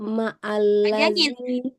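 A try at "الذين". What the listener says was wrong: panjangin. Kan hari ini kita belajar mat wajib, muttasil, panjangnya 4 atau 5 harkat, ya kan? Nah, panjangin.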